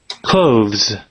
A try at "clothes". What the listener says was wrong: Clothes. Not really close. So it sounds like D and Z. Clothes. Clothes. Okay, clothes.